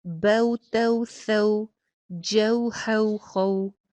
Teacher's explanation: واو لین کو ہم ایک الف کے برابر لمبا نہیں کھینچتے، اس کی ادائیگی جلدی ہو جاتی ہے، جلدی کرتے ہیں اس کی ادائیگی۔